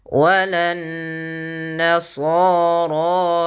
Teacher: tahan bunyi suara nunnya karena dia gunnah